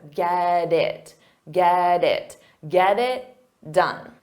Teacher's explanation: because we have a t and it's between two vowels so we'll pronounce that t as a soft D but you you have to connect the sounds together get it